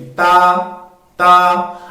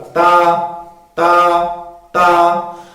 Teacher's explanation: جب ہم تا پڑھیں گے تو زبان کی جو نوک ہے، زبان کی جو نوک، وہ اوپر والے جو دو دانت ہیں جن کو ہم ثنایا علیہ کے کہتے ہیں، یہ جو دو دانت ہیں ان کے جڑوں کے ساتھ، اندر کی طرف ان کے جڑوں کے ساتھ جو ہے زبان کی نوک ملے گی